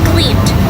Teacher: it sounds like a d sound in cleaved because it follows a voiced sound.